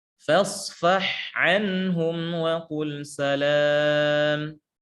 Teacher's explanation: rawan terjadi tidak jelasnya huruf H ya, karena setelahnya huruf Ain yang satu makhraj